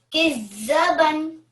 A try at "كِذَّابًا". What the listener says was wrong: Remember, we've got vertical fatha on the zal. How many seconds do we read when we have a vertical fatha? Yeah. كذابا.